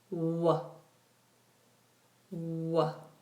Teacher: Even though we have continuous movement of air, this is not fricative because there's no friction.